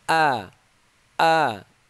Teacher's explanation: jadi Hamzah itu keluarnya di paling bawah